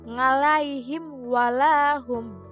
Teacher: cara membacanya itu dengan jelas di bibir dan mulut tertutup tanpa dipanjangkan. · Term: idzhar safawi